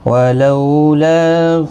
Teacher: ولو لو واؤلین ہے، تھوڑا نرمی کے ساتھ آدھے الف کی مقدار کے برابر کھینچیں گے۔ لا الف مدہ ہے، ایک الف کی مقدار کے برابر کھینچ کر پڑھیں گے